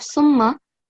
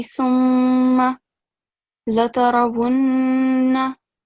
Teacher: So as I mentioned to the previous student, Mim Mushaddad, you have to perform nasal sound, but at least for 2 seconds counts or beats. So it has to be a double sound, but it also has to be long enough, right? So instead of summa, it will be summa latarawunna.